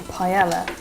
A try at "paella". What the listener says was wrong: No, the double L in Spanish is pronounced like the English Y. So it's paella. Paella. And then you run it all together. Paella. Paella.